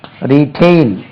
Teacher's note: stress lies on the second syllable